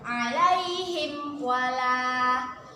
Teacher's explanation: kita baca dengan jelas tanpa berdengung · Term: izhar syafawi